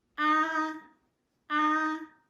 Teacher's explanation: home will be at the highest level of your voice and it is flat it's not going up and it's not going down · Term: first tone